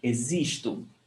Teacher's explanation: The O is pronounced with U